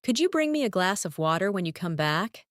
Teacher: In natural speech, could you becomes could-ya, and glass of sounds like glassa.